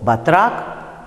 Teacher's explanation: Никакой не И, да? А близкий к А звук вы там и произносите.